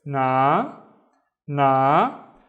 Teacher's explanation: the alif makes the na twice as long. So it's na, na.